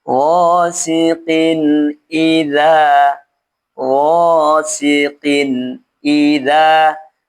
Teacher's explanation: setelah tanwin ini ada huruf hamzah, maka tanwinnya dibaca jelas tanpa ghunah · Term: izhar